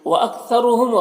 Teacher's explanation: را کو پر پیش ہے، را کو پر پڑھیں گے۔ میم میں اظہار شفوی ہو رہا ہے، اسے جلد پڑھنا۔